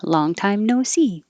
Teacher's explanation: We emphasize see, not no,